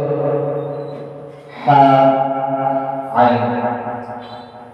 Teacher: কণ্ঠনালীর মধ্যস্থল হতে হা, আইন।